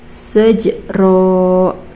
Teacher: qalqalah sugro, karena ada huruf qalqalah yaitu jim atau ja sukun di tengah kalimat.